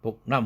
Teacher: 그와 느 사운드 비교해보면 느 사운드가 즉 C2 복남 할 때 느 사운드가 울림도가 당연히 크니까 이것을 이퀄 시키기 위해서 C1 그 사운드를 응 사운드로 바꿨다. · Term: 울림도 동화